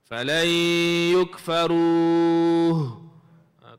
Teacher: berhenti tu ada huruf ha belakang sekali kena beri bunyi huruf ha. Fal yukfar ha kena bunyi deh.